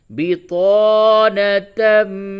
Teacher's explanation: تنوین کے بعد حروف یرملون میں سے میم آیا ہے، ادغام مع الغنہ کیجیے